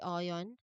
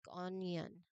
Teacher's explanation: Many native speakers, when they say onion, they often include the subtle Y sound right after the end, so it's not simply ion, but it's more like onion.